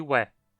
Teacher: Nós temos também uma aproximante velar labializada, mas ela é praticamente restrita a algumas expressões